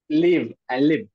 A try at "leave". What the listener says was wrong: There's a difference. Okay, the first one, that is live. It is quick. Live. Live. Live. And the second one is leave. That leave. So be very cautious. It's getting mixed up sometimes, so it sounds very similar. So I would suggest practice the IE tongue twisters.